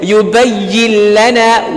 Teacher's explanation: We did not add any nasalization, just the idgham. That is why it is called al idgham al kamil, the complete assimilation.